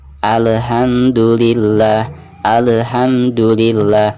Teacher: Jadi tidak boleh ada pantulan karena huruf lam ini bukan merupakan salah satu daripada huruf qalqalah ya. Jadi dibacanya tidak boleh ada pantulan.